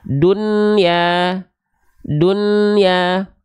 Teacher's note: nun sukun pada kalimat ini harus dibaca jelas tidak boleh dibaca lebur dan samar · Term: izhar mutlak